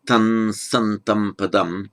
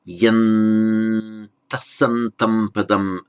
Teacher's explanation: In fact, this syllable should, strictly speaking, be short according to the poetic meter, so that M is left out, so that the heavy syllable tam becomes a light syllable ta.